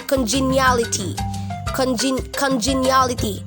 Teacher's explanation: So meron na po tayong soft D dun sa last syllable, congeniality